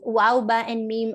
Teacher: waw, ba, and mim are pronounced using both the lips together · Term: lip letters